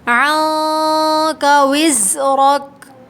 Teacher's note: عنک وزرک، یہاں پر اخفا ہوگا، زا میں سختی کی آواز آئی ہے، را کو موٹا پڑھیے، را پہ زبر ہے